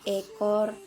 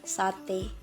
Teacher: fonem E ini mempunyai dua alofon yang pertama itu ada Tengah atas depan tak bundar dan yang kedua ada Tengah bawah depan tak bundar